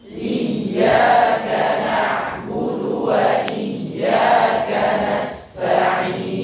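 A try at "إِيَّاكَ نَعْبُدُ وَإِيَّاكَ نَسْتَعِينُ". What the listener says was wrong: Sip, mantap.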